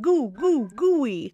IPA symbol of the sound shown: gui